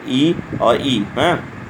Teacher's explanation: तालु से उच्चारण स्थान में ह्रस्व ई दीर्घ ई, इसका उच्चारण स्थान तालु से होता है, यानी ई कहें और ई कहें।